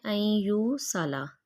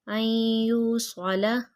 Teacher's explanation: أَن يُوصَلَ، کچھ لوگ اس کو پڑھتے ہیں أن يُوصَلَ، وہ سین کا ساؤنڈ آتا ہے، منہ گول کر کے صاد موٹا پڑھیں گے